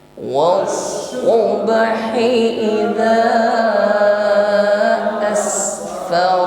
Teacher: sin sukun, nampak sifatnya hamas, jaroya dan nafasi, kita alirkan nafas.